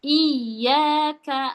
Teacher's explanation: Iya. Iyaka itu dipanjangkan bukan ditasdid. Kalau tasdid itu menekan iyaka.